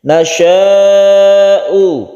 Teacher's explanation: mad wajib muttasil kita panjangkan sampai 5 harokat